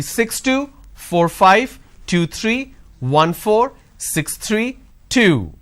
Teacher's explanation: the last unit of your string should be louder but a drop tone